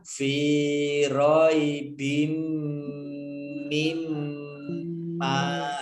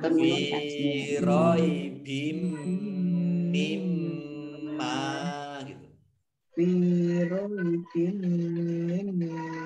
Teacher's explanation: Roy Bim. Oh, Roy Bim mendengung 2 kali, ya, ini kan ada mim tasdid, ya, 2 ya. Maka ini membacanya fi roy bim mim ma gitu.